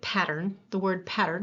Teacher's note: we hear T in pattern even though in pattern the T is actually a flap